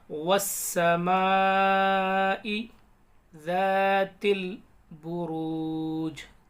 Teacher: تا کو یا لام میں ملائیں گے، الف سائلنٹ۔